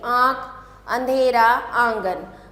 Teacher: जिन शब्दों का उच्चारण हम नाक से करते हैं। जैसे हम आँख बोलेंगे तो हमारे नाक से आवाज आएगी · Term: अनुनासिक